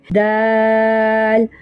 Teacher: آگے دال، دال بھی 3 حرفی ہے اور دال کا مخرج تا والا مخرج ہے۔ زبان کی نوک اوپر والے ثنایا علیہ کی جو 2 دانت ہے ان کی جڑ سے لگے